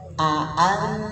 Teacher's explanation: yang alaihim itu suka dibaca amzah ya, alaihim. Harusnya alaihim ain.